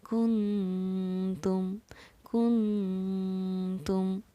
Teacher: نون ساکن کے بعد حروف اخفا میں سے تا آ رہا ہے، اسی لیے ہم نے نون ساکن پر اخفا کا قاعدہ جاری کیا اور یہاں پر ہم نے نون کو پڑھا ہے کنتم کنتم.